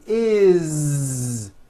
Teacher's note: It's never is, unvoiced, never. It's always is with a voiced Z.